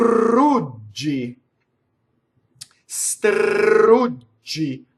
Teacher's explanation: we make expression in Italian by the rolled R and also by the long you vowel